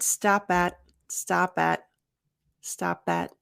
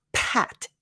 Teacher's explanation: you're not going to over aspirate the p